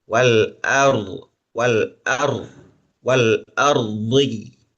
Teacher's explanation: setelah hamzah yang harokatnya fathah kemudian ro sukun itu ada peralihan dari tipis ke tebal.